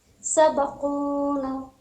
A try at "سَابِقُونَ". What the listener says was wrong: نون پہ دیکھیے منہ کھولنا ہے الف مدہ ہے سبقونا نا